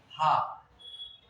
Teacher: तो हा ये गला अंदर का फैलता है, वहां पे वायु टकराती है, वहां से उच्चारण होता है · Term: कंठ